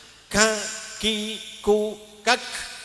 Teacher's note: Syiddah itu nahan suara. Suaranya ditekan tapi nafasnya dikeluarkan ya. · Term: sifat hames